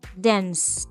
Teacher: Cuando estás pronunciando un verbo en pasado terminado en ed, haces como si fueses a pronunciar la letra D o la letra T al final, pero en vez de pronunciarla, ahí mismo cortas el aire